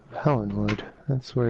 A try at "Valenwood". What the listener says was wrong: Valenwood, not Helenwood. Sounded like you said Helenwood. It just sounded like you said Helenwood.